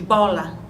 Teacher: o b é um fonema oclusivo quanto ao modo e vai dizer que é um fonema vozeado